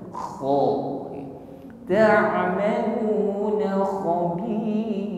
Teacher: Huruf kha ada gesekan di tenggorokan sehingga ada bunyi dengkur ya. Kha sifatnya isti'la, bunyi suara yang keluar ini tebal.